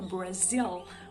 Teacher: Então, Brasil. E o L é um dark L, ou seja, pronunciado lá no final, lá no finalzinho da nossa boca, né? Do céu da boca, Brasil.